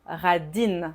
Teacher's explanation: Au féminin, radine, ça casse la voyelle nasale.